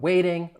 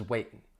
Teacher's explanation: It changes from a flap T to a glottal T, a glottal stop, when you're talking about waiting versus waitin'.